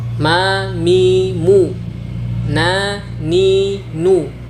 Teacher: menuju ke saluran rongga hidung terbuka seperti pada gambar ini sehingga Mengalirlah suara melalui hidung dari makhraj ini keluar dua huruf yaitu mim dan Nun